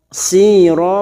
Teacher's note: fathatain yang dibaca waqaf, mad iwad cabang dari mad tabi'i 2 harokat kita panjangkan